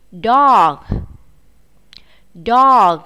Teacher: Các em nhớ bật hơi chữ G ở cuối từ nhé